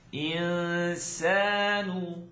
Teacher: If you're still working on that tongue not touch ikhfa sound, let it come through. It's going to be a nasaling sound, and it's not going to really press in your nose. It's just going to kind of float.